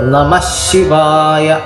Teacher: ചേർത്ത് ചൊല്ലുകയാണെങ്കിൽ വിസർഗം മാറി ശകാരം അവിടെ ഇരട്ടിക്കും. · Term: ശകാരത്തിന് ഇരട്ടിപ്പ്